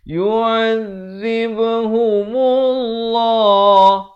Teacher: dibacakan lafaz jalalah dengan tebal 2 harakat